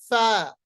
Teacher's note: ثنایا علیا کا کنارہ یعنی اس کی جو یہ نوک ہے، کنارہ جو ہے، جب یہ نیچے والے ہونٹ کے اندر والے حصے یعنی تر حصے سے مل جاتا ہے تو ہمارے پاس فا ادا ہوتا ہے۔ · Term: فا کا مخرج